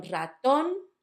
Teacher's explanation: The first one, raton, it's on the last syllable.